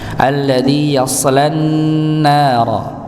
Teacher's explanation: Sa sama seperti sa, assa, asso sama, cuma bedanya adalah sifatnya yang menjadikan pangkal lidah itu terangkat, menjadikan dia tebal huruf sa-nya. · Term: isti'la